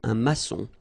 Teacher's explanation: O-N in your nose, nasal